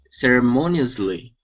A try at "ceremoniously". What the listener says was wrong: Okay, very nice. Very nice.